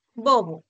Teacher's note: pero para el segundo sonido ya no haces ese mismo movimiento ya no se cierran y explota sino simplemente se aproximan los labios y el aire escapa · simplemente se aproximan los labios y el aire escapa bobo entonces en el primer caso tienes un sonido que es más oclusivo y en el segundo vas a tener un sonido que es más fricativo